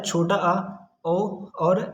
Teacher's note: अर्धविवृत, मतलब half opened, हमारा मुख आधा खुला रहता है